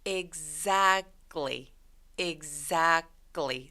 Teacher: 이 C 소리가 약간 된 소리로 나서 gly 라고 소리 난다고 보시면 돼요. 이 EX로 시작하는 단어들이 다양한 소리를 가지고 있는데 이 exactly 같은 경우는 eggs 이렇게 gs 이 소리를 가지고 있어요. · A 모음 뒤에 C, T, L 이렇게 세 개의 자음이 딱 붙어 있죠. 이런 경우에는 중간에 있는 T 소리가 삭제됩니다. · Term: Three Consonant Rule